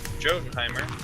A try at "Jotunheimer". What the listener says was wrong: Jotunheimer. You do not pronounce the J.